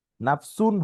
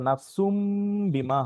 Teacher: নাফসুন হওয়ার কথা ছিল কিন্তু নাফসুম বিমা হবে